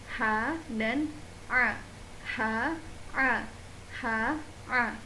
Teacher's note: Huruf tenggorokan bagian yang kedua yaitu adalah huruf tenggorokan bagian tengah, yaitu huruf ha dan juga huruf ain.